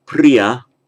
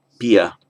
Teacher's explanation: you do not start any word in Pali with a double consonant. The pr will become a p. If a vowel precedes it, then it will double.